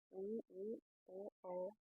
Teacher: वृत्तमुखी स्वर जिनके उच्चारण में होंठ गोलाकार या वृत्ताकार होते हैं